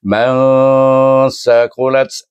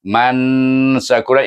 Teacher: Pertengahan antara izhar dengan idram. Itulah bacaan ikhfa yang sebenar iaitu antara izhar dengan idram. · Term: ikfa wusta